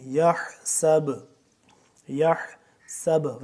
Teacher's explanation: وقف کریں گے تو یہ با قلقلہ ہوگا